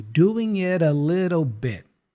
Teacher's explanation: And the A is a schwa sound